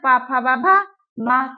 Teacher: कुछ वर्ण ऐसे हैं जिनको बोलने में हमारे दोनों होंठ क्या करते हैं, ओष्ठ स्पर्श होते हैं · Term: ओष्ठ्य वर्ण